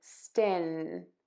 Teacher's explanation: your tongue is touching the top teeth for that n Sound